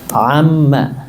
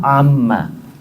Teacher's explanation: awalnya dia nun diidghamkan kepada mim, maka kemudian jadi mereka huruf yang satu, si nunnya berubah menjadi huruf mim